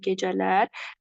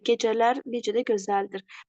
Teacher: Bu zaman gecə bütövlükdə isimdir, lalələr cəm şəkilçisidir. Hər ikisindən vurğu sona düşür.